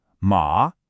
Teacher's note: It goes down and then comes back up. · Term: dipping tone